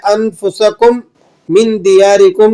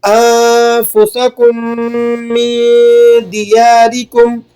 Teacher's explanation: پہلا میم دوسرے میم میں چھپ جائے گا پورا کا پورا۔ اس چھپانے کو، اس مدغم کرنے کو ادغام کہا جاتا ہے۔ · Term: ادغام شفوی